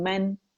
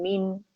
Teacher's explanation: अच्छा, जो चीज इसमें याद रखनी है वो ये है कि आप लोगों ने जब इसे अदा करेंगे तो मन के लिए जबड़ा खुलेगा, आवाज ऊपर से जाएगी मन, और मिन के लिए मीन, आवाज नीचे जाएगी